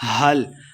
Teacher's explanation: ہا کو حلق کے نچلے والے حصے سے پڑھیں گے۔ حل اتاک، تا کے اوپر کھڑی زبر 2 حرکات لمع کرنا ہے۔